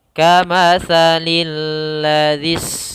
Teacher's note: Pada dasarnya di sini alladzi ada dua huruf yaitu alif dan lam, yang dimana ditandai dengan lam double di sini, sehingga lamnya ada dua. Alladzi, cara membacanya langsung ke lam yang bertasydid